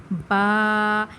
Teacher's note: اس کا مخرج ہے، یہ حروف شفویہ میں سے ہے، اسے یہ دونوں ہونٹوں کے تر حصے سے ادا ہوتا ہے